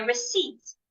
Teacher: Don't say receipts. The P should not be heard.